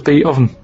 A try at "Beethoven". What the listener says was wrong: No, you said beat. Beat Oven. It's not Beethoven.